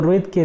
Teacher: री सिर्फ क्या है, हस्व है और मूर्धन्य है। ठीक है, ना तो ये पश्च से बोला जाता है ना तो समवृत विवृत होता है, तो इसको ध्यान में रखिएगा।